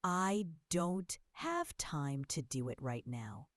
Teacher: Notice how don't, time, do, and right are stronger while I, too, it, and now are softer. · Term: stress